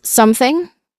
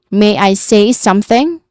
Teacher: There is a voiceless th sound and then an ng sound at the end.